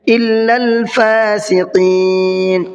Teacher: قاف کو منہ بھر کے پڑھنا ہے